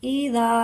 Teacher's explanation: زال کے ساتھ الف ہے، ایک الف کے برابر لمبا کر کے پڑھیں گے